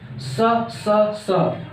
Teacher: स ये अघोष और महाप्राण का ही निर्माण होता है